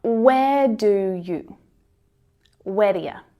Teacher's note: So we've got do and you. Both of the vowel sounds reduce to the schwa and they connect